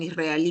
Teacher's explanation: israelí es una palabra aguda mayor fuerza de voz en la última sílaba y además termina en vocal la debo tildar mira ahora acá